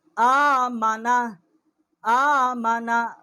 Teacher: حمزہ کھڑا زبر آ، میم زبر ما، نون زبر نا، آمنا۔ کیونکہ حمزہ جو ہے اس کے اوپر کھڑا زبر ہے، ایک الف جتنا اس کی آواز جو ہے ہم اٹھائیں گے